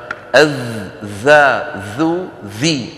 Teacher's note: أقصى اللسان في الظاء مرتفع لأنها كما سيأتي معنا حرف مستعل مطبق، بينما الذال والثاء كما نرى لا يرتفع أقصى اللسان عند نطقهما لأنهما حرفان منفتحان مستفيلان كما سيأتي بإذن الله.